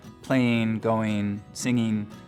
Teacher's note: one of the things we start to hear in the Mountain West generally is ing endings pronounced as een